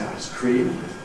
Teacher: I say ˌice ˈcream, late stress